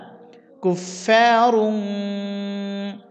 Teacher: দুই জের দুই পেশকে তানবিন বলে সুতরাং তানবিনের পরে ফা আসছে ফা ইখফার হরফ এখানে গুণনা করতে হবে এই গুণনাটির নাম ইকফা গুণনা কুফারুং ফা জবর ফা লাম ইয়া